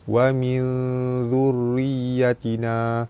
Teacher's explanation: Nun mati bertemu dengan zal, hukum dia ikhfa hakiki, dibaca sama-sama nipis dan dengung 2 harakat. Ra baris bawah dibaca nipis.